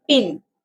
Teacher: [clears throat] So P when pronouncing P in pin P in pin vocal do not vibrate P simply lips. So the airflow is stopped by the both lips because we have said so lips are touching each other the voice is remain inside the mouth. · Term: bilabial